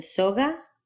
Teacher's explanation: basically a V made with both lips, As in soga. made in the same place as G or K, but allowing a bit more air through